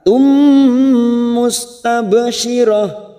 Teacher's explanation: Dhahikatum duma tanwin pada huruf ta marbuta di sini. Siap masuk ke huruf mim ditekan sama 3 harokat.